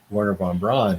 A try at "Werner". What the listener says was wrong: But Werner, I want to say Werner because when you speak German, the W's are pronounced with a V.